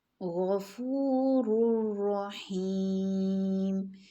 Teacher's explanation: غین موٹا لیٹر ہے نا، لیکن ہم اس کو بہت زیادہ موٹا نہیں گا رہے